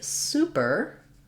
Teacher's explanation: So when I'm saying superior, or even if I say super, there I have a clear vowel. The first syllable is stressed, so it sounds like super.